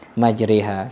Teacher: Ini imalah itu membaca harokat fathah yang miring ke kasroh. Ya, gampangnya imalah itu membaca dengan suara e